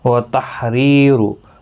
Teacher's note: را زیر کی وجہ سے باریک پڑھا جائے گا